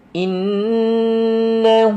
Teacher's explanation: perhatikan maknanya dengung dua harakat. Wajibul gunnah.